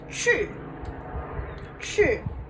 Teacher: its fourth tone so you want to sound mad when you say it